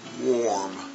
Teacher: you're going to notice how strong R is especially in this American English